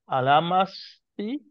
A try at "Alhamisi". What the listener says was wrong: Alhamisi. No. Alhamisi. Misi, not masi.